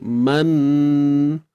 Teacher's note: Kita datangkan dulu kita peringkat awal dengung tu, baru kita muncung.